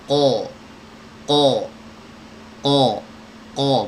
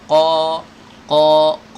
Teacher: karena si qaf ini memiliki sifat isti'la atau mengangkat bagian belakang lidah